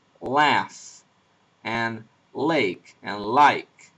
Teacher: And very often in American English, the back of the tongue is also pushed back so that the sound is velarized. It sounds more like it's pronounced in the back of the mouth.